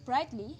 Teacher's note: the stress does not shift when the suffix is added to the monosyllabic adjective from which the adverb is derived. The resulting adverb is a polysyllabic word with the basic trochaic pattern for polysyllabic words that's called antepenultimate stress. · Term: stress-neutral suffixes